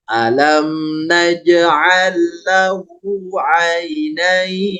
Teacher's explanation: Jangan tergesa-gesa nain. Ya panjangkan dulu. · Jadi kalau aina ini mengayun saja, kalau nain ini panjang 2 sampai 6 harokat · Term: madlin